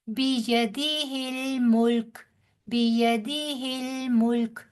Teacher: ملک، کاف کو جزم دے دیں گے وقف کی صورت میں، جزم دیتے ہوئے ملک، لام بھی ساکن کاف بھی ساکن.